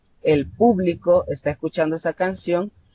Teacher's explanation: yo digo público con la fuerza vocal al inicio, en la primera sílaba